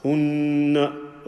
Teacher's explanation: because it's a noon, we will make a sound from the nose and make the gunna sound